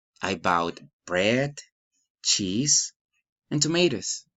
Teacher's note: Enumerating, rise in intonation.